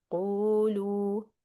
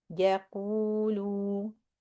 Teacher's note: Qu and lu, same exact length, madd tabi'i, the lips stretching forward.